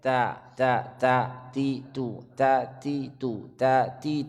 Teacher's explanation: Bagi yang ingin menyempurnakan bacaannya, di huruf ta itu diberi sifat hamas, adanya sedikit angin di huruf ta. Karena dia huruf ta dalam semua kondisi ada sifat hamasnya.